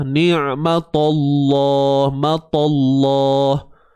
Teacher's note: Tebalnya pada lam, bukan tebal pada ta. Ta ni asbab je, baris dia tu. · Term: Kalimah Allah tebal